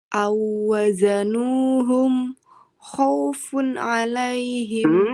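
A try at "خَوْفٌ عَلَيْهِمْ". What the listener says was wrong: Diberikan satu khaufun alaihim. Funnya juga ada nunnya ya. Khaufun alaihim. Jangan buru-buru Bun, nunnya dialirkan dulu. Khaufun alaihim.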